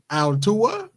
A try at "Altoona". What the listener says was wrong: No, nigga, I just said O-O-N-A, not U-N-A, O-O-N-A. How the fuck you spell cartoon?